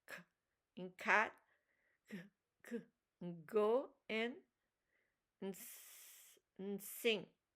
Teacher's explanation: Velar back of the tongue against the soft palate